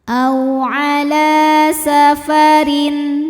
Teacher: Huruf ra dibunyikan secara tarqiq karena berbaris kasroh. Maka dibacanya tipis.